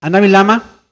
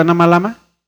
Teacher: Es Ana Ávila Ama. Lo que hice es juntar, obviamente termino una palabra y la otra empieza con la misma vocal o con la misma letra.